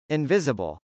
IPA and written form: .ɪnvˈɪzəbəl (invisible)